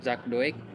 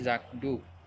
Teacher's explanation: Bunyi K pada kata zak berubah menjadi bunyi G velar bersuara karena dipengaruhi oleh bunyi D yang mengikutinya. Dengan demikian dapat disimpulkan bahwa bunyi K pada kata zak disesuaikan atau diasimilasikan artikulasinya dengan bunyi D yang mengikutinya sehingga sama-sama bersuara.